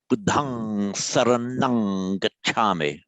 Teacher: the Thais, when they're speaking or chanting Pali, always pronounces a ng sound